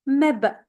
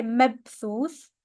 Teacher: If you are familiar with the qalqala, the echo sound, then we have one right here with the ba with a sukoon. Mab. Don't say mabthuth.